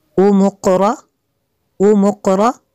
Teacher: मीम को काफ के साथ मिलाना है। इसके ऊपर जो मद है ये मद मुत्तसिल है क्योंकि हमज़ा इसी कलमे में है।